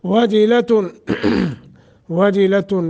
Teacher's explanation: نون تنوین کے بعد حمزہ اظہار کریں گے